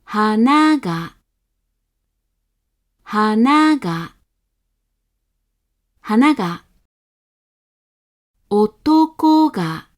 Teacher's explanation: all remaining moral within the word have a high pitch however the particle then attaches with a low pitch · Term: odaka